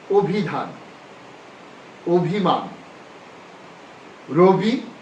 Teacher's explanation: ইকারান্ত ধ্বনির পূর্বে শব্দের আদ্য অধনির উচ্চারণ সংবৃত হয়